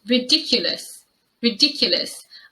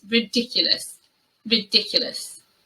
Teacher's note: I think the mispronunciation mostly happens in the third syllable, and sometimes I hear this as ridiculous. And it's really important that you use the y sound and the schwa there on that third syllable